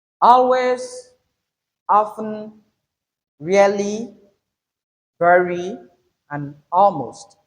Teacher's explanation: We have the stress pattern on the first syllables of each of these words, each of these adverbs. · Make the first syllable louder than any other syllable. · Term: emphasis